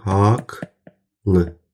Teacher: Bu sözdə haqlı sözündə cingilt samit gəlməyinə baxmayaraq, q səsi k-ya çevrilir.